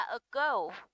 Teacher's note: ago, trọng âm rơi vào go